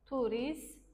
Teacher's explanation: Turist kimi tələffüz olunur. Gördünüz yenə t düşdü.